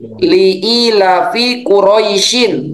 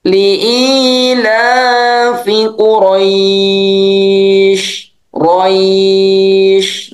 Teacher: Roinya pendek. Menjadi panjang itu karena diberhentikan. Roi. Nah, jadi panjang. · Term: madlin